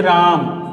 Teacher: अगर हम लिख देते हैं मान लीजिए इस तरह से राम, तो रा जो है र पर आ की मात्रा है, रा जो है र पर आ की मात्रा है, तो उसमें र को हम पढ़ेंगे देर तक, इसलिए जो र में आ है उसमें प्लुत स्वर कहलाएगा